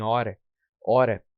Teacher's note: a letra H tem um fonema nulo, então não podemos sentir o som da letra H